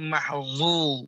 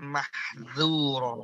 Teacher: Ya, mahdzura ya tipis. Jangan sampai mahzu tebal. Tapi yang betul adalah mahdzura tipis.